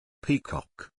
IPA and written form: ˈpiː.kɒk (Peacock)